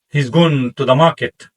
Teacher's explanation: In English sentence like he is going to the market sounds like he's going to the market. We squeeze small words only going and market are strong · We squish small words, only, going, and market are strong.